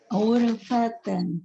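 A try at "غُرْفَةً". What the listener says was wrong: Tebal tipis ro. Tebal ya. Tebalkan ro. Urfatan.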